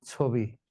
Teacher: সুতরাং ছ এর সঙ্গে অ আছে ছ তারপরে রসই। এজন্য ছ এর সঙ্গে যে অ আছে সেই অটা এখন ও হয়ে যাবে।